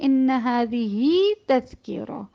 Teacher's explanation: ہا کو 2 حرکات کے ساتھ پڑھا جاتا ہے کیونکہ یہ 2 متحرک کے درمیان ہے، زیر کے ساتھ ہے اور مؤنث کے لیے ہے، تو یہ بھی اسی کے تابع آتا ہے.